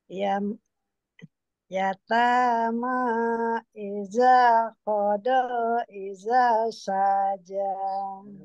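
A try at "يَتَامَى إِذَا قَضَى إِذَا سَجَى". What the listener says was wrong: Sa-nya kepanjangan sedikit Bu. Ida saja. Sedikit lagi Bu.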